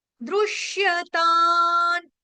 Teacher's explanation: ता के ऊपर जो बिंदी यानी कि अनुस्वार है उसका उच्चारण होगा हलंत न आधे न से